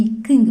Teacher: நாக்கோட இந்த வாயோட இந்த மேல அன்னத்தோட சென்டர் பகுதியை தொடுறது இச்சு, இஞ்சு. நாவோட முதல் பகுதி அன்னம் தொடுவது